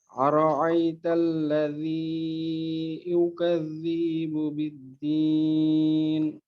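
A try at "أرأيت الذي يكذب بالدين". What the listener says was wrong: হ্যাঁ এখানে দুইটা জায়গাকে আরেকটু ছোট করতে পারলে ভালো হবে। একটা হলো যে ইউকাযযিবু, ইউ এবং জি, ইউ তো ইউ, ইয়া পেশ ইউ, জালজের জি, ইউকাযযিবু। এখানে যেন ইউকাযযিবু এমন না হয়।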